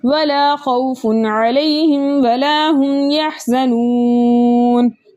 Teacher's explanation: واو ساکن سے پہلے کسی بھی حرف کے اوپر پیش ہو ایسا واو مدہ کہلاتا ہے، واو مدہ کو 2 حرکت کی مقدار کھینچ کر پڑھتے ہیں، لیکن آگے نون کا سکون عارضی وقف کی صورت میں آ رہا ہے، اس لیے یہاں پر مد بنے گی مد عارض وقف جس کی مقدار 2 4 6 حرکت ہے، لیکن 6 حرکت کی مقدار کھینچ کر پڑھنا زیادہ بہتر ہے۔